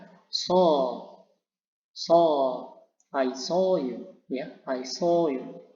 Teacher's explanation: Nah, selanjutnya pada simbol ini dengan ada titik 2 hampir sama tadi yang pertama, bedanya apa? Agak panjang sedikit dan lidah agak tegang ya dalam deskripsinya